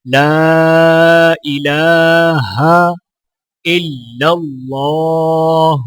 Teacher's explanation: اللہ کے لام کو موٹا پڑھا جائے گا اور لام کے اوپر کھڑا زبر ہونے کی وجہ سے ایک الف کے برابر کھینچ کر پڑھا جائے گا۔